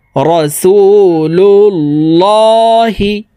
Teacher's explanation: রাসুলুল্লাহি এই লামকে মোটা ভাবে অর্থাৎ ল ভাবে পড়তে হবে কারণ আল্লাহ শব্দের আগের হরফে জবর অথবা পেশ হইলে এই লামকে ল অর্থাৎ মোটা করিয়া পড়িতে হয়